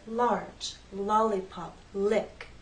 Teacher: the air flows out on either side of your tongue while the tip stays up against that hard bump as you finish making the sound the tongue drops down so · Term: L Sound